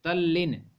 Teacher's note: तो तत् त का ल हो जाता है, तो त का ल इसमें यहाँ पे दिख रहा है तल्लीन, त ल और ल है ना, तल्लीन।